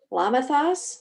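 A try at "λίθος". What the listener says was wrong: No, it's just an L sound. Lithos.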